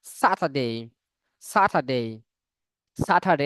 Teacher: আর এর পরে কনসোনান্ট থাকলে আর উচ্চারণ হয় না। এই যে আর এর পরে ডি, ডি এটা কনসোনান্ট।